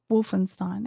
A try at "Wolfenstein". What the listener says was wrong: Wolfenstein. Instead of a W, just say it with a V.